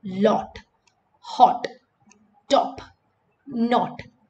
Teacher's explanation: So it is a very open O.